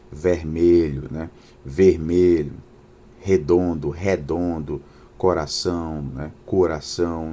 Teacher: Em alguns estados da região nordestina, é muito comum a pronúncia aberta das vogais E.